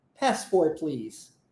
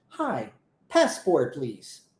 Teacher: o t não é pronunciado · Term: o t sendo omitido